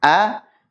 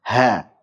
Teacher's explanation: hamzah dan ha ini sama-sama dari tenggorokan bagian bawah, hanya saja dia lebih bawah daripada ha. Ha agak atas sedikit.